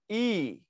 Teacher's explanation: জীবটা চলে আসে সামনের দিকে এবং জীবটা উঁচুতে থাকে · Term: হ্রস্ব ই